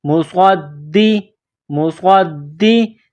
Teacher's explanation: صاد میں سیٹی کی آواز پیدا کرنی ہے. صاد کو موٹا کرنا ہے. صاد کو دال کے ساتھ ملانا ہے.